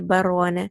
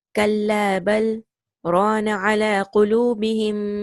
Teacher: the merging is prevented, so you will make a small stop and then you will continue with rana · You don't say barwana, because lam and ra, they are very close in their makhraj. Here there will be no idgham. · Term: sakt